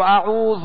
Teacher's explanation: دراز نہ ہو، کھینچے نہیں، اور زال کو نرمی کے ساتھ ادا کرنا ہے